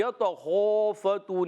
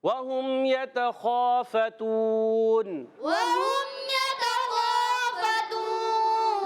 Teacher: خا سب سے کم حرف مستعلیہ میں سے کم درجے کا موٹا ہے